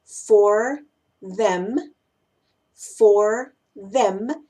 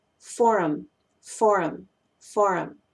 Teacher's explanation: caso también muy importante en cuanto la eliminación de sonidos es con la letra h en las palabras him y her y la combinación th en la palabra them esos sonidos se suelen eliminar por completo